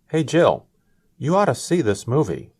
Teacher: said oughta because he was speaking quickly